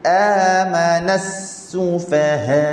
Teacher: Masa kita sebut sufa, fa dengan ha tak nak bunyi tebal, tak nak bunyi sufaha.